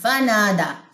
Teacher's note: یہاں پہ الف مدہ کا قاعدہ ہے، فا کی زبر آپ نے لمبی نہیں کرنی، فانادا نہیں پڑھنا · نون بھی لمبا ہوگا الف مدہ کی وجہ سے، دال بھی لمبا ہوگا